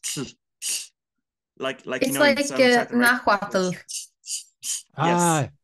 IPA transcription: ɬ